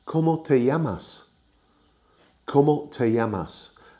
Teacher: Te llamas is you call yourself. And you turn it into a question by going up at the end of the sentence